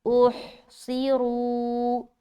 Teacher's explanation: اوہ اوہ، صاد زیر سی، را پیش رو، احصروا، اوہ، ہا کو نکالیں گے، صاد کو موٹا رکھنا، را کو بھی موٹا رکھتے ہوئے واو مدہ کرنا